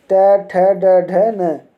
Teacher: ट का उच्चारण स्थान होता है मूर्धा